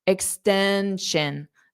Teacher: it's like you're putting an N sound in front of extension, an extension, an extension, extension.